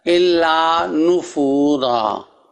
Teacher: را کے بعد جو الف ہے وہ وقف کی صورت میں پڑھا جائے گا الا نفورا. اور آگے چونکہ تا کی زیر ہے سین کے بعد استکبارن، چونکہ تا کی زیر ہے الف کو زیر دیں گے استکبارن فی الارض.